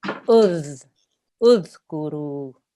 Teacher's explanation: Very good. So we don't want to have a z. There's no buzzing sound there. Okay, it's more like a th sound. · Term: dhal sound